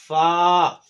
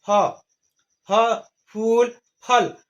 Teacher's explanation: फा अदा करने में ऊपर का दांत और नीचे का होंठ मिलेगा, ऊपर का होंठ और नीचे का होंठ नहीं मिलेगा